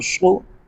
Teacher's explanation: زیر فی نہیں کریں گے، فی، صاد پیش سو، یاد رکھیں اگر صاد کو موٹا نہیں کریں گے تو صاد سین بن جائے گا